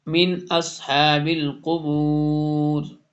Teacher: نون ساکن کے بعد حمزہ آ رہا ہے تو یہاں پہ اظہار ہو رہا ہے